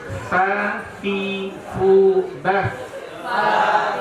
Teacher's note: Ujung gigi seri atas dengan bibir bawah bagian dalam.